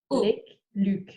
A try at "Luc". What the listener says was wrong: Luke, u. It's like, yeah, it's tighter. It's more round, isn't it?